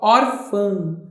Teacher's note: Faz um teste, ó, órfã. Você vai ver como as tuas fossas nasais, elas têm uma vibração no momento em que esse fã ele sai.